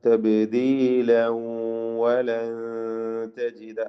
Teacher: തബ്ദീല ബാഇന് ഖൽഖല സുഗ്റ നൽകുക. വഖഫ് ചെയ്യുന്നില്ലെങ്കിൽ തബ്ദീല വലൻ എന്ന് ഇദ്ഗാം ബിഗുന്ന ചെയ്ത് മണിച്ചുകൊണ്ട് ഉച്ചരിക്കണം, ലയിപ്പിക്കുക.